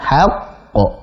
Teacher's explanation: qalqalah kubra yang bertasydid. Jadi kita jeda sejenak baru dipantulkan.